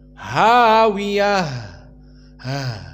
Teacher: di saat kita mensukunkan ta almbutah makhrajnya menjadi ha maka makhrajnya bukan ta tetapi ha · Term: ha atnis